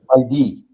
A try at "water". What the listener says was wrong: It's not D, it's not R, it's something in between. Water.